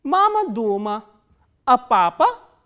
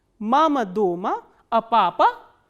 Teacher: in the first part the intonation starts from the medium pitch, it comes down and then again it rises up and then comes down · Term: fourth intonational construction